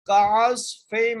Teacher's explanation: کو بغیر کھینچے پڑھیں گے، عین کو صاد سے ملائیں گے، صاد کو موٹا کر کے پڑھیں گے